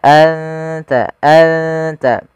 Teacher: ke huruf ta an ta dan makhraj daripada huruf ta sendiri makhrajnya adalah ujung lidah kita ujung lidah menempel dengan gusi atas kita atau apa perbatasan antara gusi atas dengan gigi seri atas maka